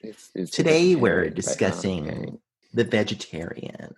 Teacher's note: like full NPR vocal fry voice. Like you got to really soy up your voice.